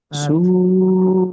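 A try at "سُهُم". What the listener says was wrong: হু নয় উ, হামজা।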